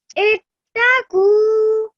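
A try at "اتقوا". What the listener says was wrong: Make sure you elongate that nicely once more.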